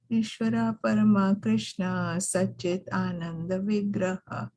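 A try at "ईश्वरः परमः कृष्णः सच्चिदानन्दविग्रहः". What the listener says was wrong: Now, give a little bit more energy when there is a H with a dot, H with a dot. Ishvaraha Parmaha Krishnaha Satchidananda Vigraha Anadiradir Govindaha Sarva Karana Karanam.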